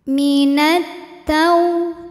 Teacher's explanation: yadai minat kemudian Alif lamnya dinamakan dengan alif lam syamsiah karena alif lam menghadapi huruf Syamsiah yaitu huruf Ta Maka alif lam tidak kita baca atau disebut dengan Idgham Syamsi minatau tau ada harfulin sebab ada